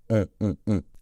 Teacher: à la fin on a une nasale on qui ressemble un peu à la lettre O mais en nasale plus au niveau du nez on on on avec les lèvres arrondi on donc aunon OK